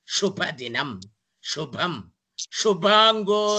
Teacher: If you use tip of the tongue, you will get the sound su for Subramanyam. But if you use the middle of the tongue, upper palate, then you will get the sound shu for Shubhadinam, Shubham, Shubhango Loka Sarangas, how you are telling.